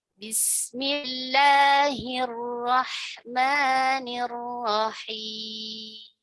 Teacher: panjangnya Hanya dua harakat saja tidak tidak boleh terlalu panjang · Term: mad tabi'i